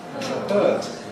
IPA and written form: hɜːt (hurt)